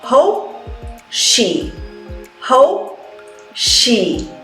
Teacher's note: So you say hope, hold the P.